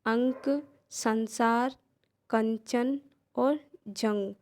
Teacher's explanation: अनुस्वार, जिनकी ध्वनि नाक से होती है।